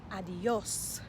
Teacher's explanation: notice that the accent is on the o and that means that we put the emphasis on the o so we don't want to put the emphasis on the a